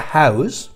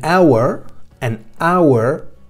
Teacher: esa h es muda es decir que no pronunciamos la h